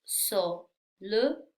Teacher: Solution es una palabra de 3 sílabas. Solution. La acentuación va en la segunda sílaba, lo que significa que las otras 2 se convierten en sonido schwa.